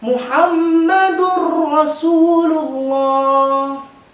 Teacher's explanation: Bukan Muhammadur Rasul, tidak dengan dengungan, tetapi Muhammadur Rasulullah. Hilang tanwinnya, masuk huruf ro-nya. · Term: idgham bila gunnah